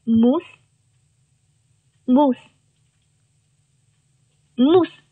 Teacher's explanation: 你看，虽然它是在两个元音字母之间，那它也读清辅音▁s。